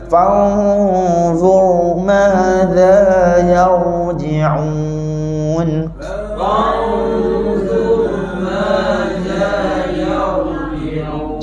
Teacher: Fanzur ra tebal, yarji'un pun ra tebal. Dua-dua masa kita sebut ra tu, lidah kita ke belakang.